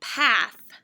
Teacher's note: with math and moth and path you know your tongue is under your front teeth